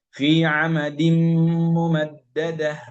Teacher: അത് ഉൾഭാഗത്ത്, ഇത് വായയുടെ ഉള്ളായിട്ട് സങ്കല്പിക്കുകയാണെങ്കിൽ ഈ പുറത്തേക്ക് പല്ല് കാണാൻ തുടങ്ങുന്ന ആ ഭാഗത്താണ് അവിടെ വെച്ചിട്ട് ഉള്ളില് മേലെ മുൻപല്ലിന്റെ മുരടിൽ വെച്ചുകൊണ്ട് ദീദു ശബ്ദാവുമ്പോഴൊന്നും അവിടെ കാറ്റ് വരരുത്. ഫീ അമദിൻ മുമദ്ദദ, നേർപ്പിച്ചാണ് ഉച്ചരിക്കും. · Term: ദാല്